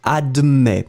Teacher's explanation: You will write it A-D-M-E-T S. Final S is not pronounced, so you will in fact pronounce admet.